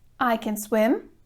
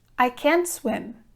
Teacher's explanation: can remains unstressed whereas in the ne negative sentence we stress we emphasize the verb can't